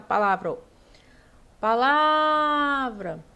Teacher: Qual é a sílaba que fica prolongada? É o lá. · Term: sílaba tônica